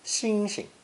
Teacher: In Beijing dialect, the second syllable is unstressed, xing xing.